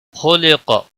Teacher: خا اور قاف دونوں حروف مستعلیہ میں سے ہے، پر پڑے جائیں گے۔ نون ساکن کے بعد میم مشدد آیا ہے، ادغام با گنہ ہوگا۔